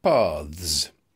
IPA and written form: pɑːðz (paths)